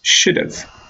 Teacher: you can hear that I am making a very short schwa sound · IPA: /ʃʊd(ə)v/